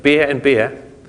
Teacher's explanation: I can't hear any difference. That's the near and the square diphthongs